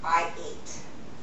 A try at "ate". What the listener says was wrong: Eight. Like number eight. Not eat.